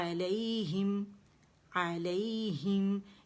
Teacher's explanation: ہی باریک ہے, اسے موٹا نہیں کرنا اور زیر کے ساتھ پڑھیں گے, ٹھیک ہے. علیہم, ہم پہ میم پہ جائیں گے اور ایک کاؤنٹ کے لیے آواز چلے گی, علیہم, پھر ہے نارن، نارن، نا باریک ہے، نارن نہیں پڑھیں گے، ٹھیک ہے، نارن، نارن مؤصدہ، ٹھیک ہے.